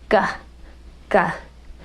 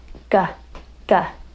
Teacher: Notice when you produce the G sound, your tongue is pulled back in your mouth and it's bulging. It has a sort of a mountain top, and that mountain is touching the palate.